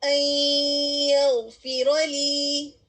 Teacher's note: نون ادا ہو رہا ہے لیکن یا میں مرج ہو کر غنہ، اس کے غنہ کی آواز ہمیں آ رہی ہے